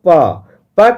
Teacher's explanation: आपका जो दोनों लिप्स है दोनों ओठ है जो है एक दूसरे को स्पर्श करता है आप बिना ओठ को सटाए हुए प बोल के देखिए अ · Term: ओष्ठ व्यंजन ध्वनि